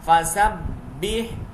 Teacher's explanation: با حروف قلقلہ میں سے ہے اور یہ مشدد ہے، جمع کے پڑھیں گے. ہا باریک پڑھا جائے گا، سین پہ سی ڈی کی آواز آئے گی.